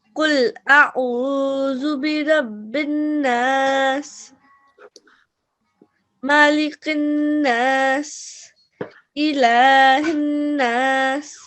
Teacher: So you've given a thick sound for the qaf, which is really good. And you've given the sound of the ayn from the middle of the throat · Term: throat letters